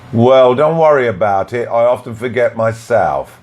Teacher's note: Here we add y between worry and about, and we add y between I and often.